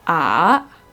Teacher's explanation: so you can hear the tone in my voice i go down and then i go up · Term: diptone, dip tone